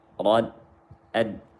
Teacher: Jangan tebalkan tasydid dal, terpengaruh dengan ra. Jangan terpengaruh tasydid dal dengan ra tebal.